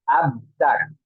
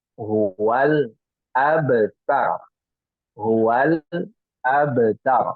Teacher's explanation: Dia tidak memantulkan huruf ba. Padahal huruf ba itu qalqalah ya. Dan qalqalah itu membal. Membal itu mantul.